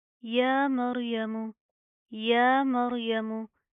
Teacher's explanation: یا کے اوپر کیا کھڑا زبر آ رہا ہے، اس کو آپ نے ایک الف کی لمٹ کے برابر کھینچ کے پڑھنا ہے، ٹھیک ہے. را کو پراپر منہ کو پر کر کے پڑھیں گے، موٹا پڑھیں گے